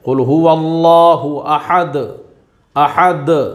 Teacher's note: دال میں ہم قلقلہ بھی کریں گے اور اس کو ساکن بھی پڑھیں گے کیونکہ دال کے اوپر دو پیش کی تنوین ہے۔